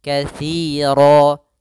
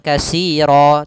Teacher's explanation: banyak sekali yang mengganti huruf tsa diganti dengan Sin ini sering terjadi yaitu Bukan dibaca dengan Sin jangan kasiro tapi